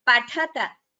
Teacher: Only Tha is Mahaprana. Ta is Alpaprana.